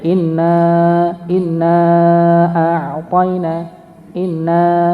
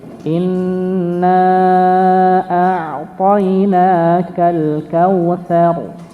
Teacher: maka huruf nun yang bertasydid didengungkan, jangan lupa didengungkan 2 harokat